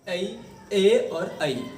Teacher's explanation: आपके अंदर की प्राणवायु कंठ के साथ तालवे से भी टकराएगी, तो इसलिए इनको ए और ऐ कंठ तालव्य कहते हैं।